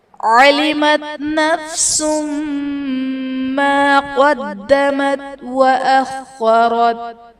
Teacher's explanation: عَلِمَتْ نَفْسٌ مَا قَدَّمَتْ وَأَخَّرَتْ، نفس ما قدمت میں سین پر دو پیش کی تنوین ہے، تنوین کے بعد حروف یرملون میں سے میم ہے تو یہاں پر ادغام مع الغنہ کا قاعدہ ہوگا، یعنی تنوین میں ہم غنہ کر کے پڑھیں گے